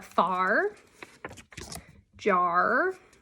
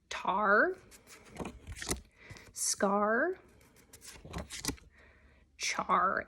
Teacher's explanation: the only sound you really hear is the r sound you don't really hear the a sound at all · do you hear how you just hear the r and you don't hear the a it's not j a r because that doesn't make any sense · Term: bossy r, bossy R